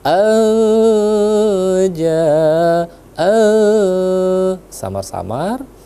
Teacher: nun mati bertemu dengan Jim hukumnya adalah ikhfa ya samar samar